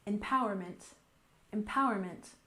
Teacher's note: we stress the second syllable